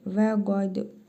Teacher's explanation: Qa. Dəl hərfinin üzərində cəzm var. Qalqalə hərfidir. Vurğulu tələffüz edirik.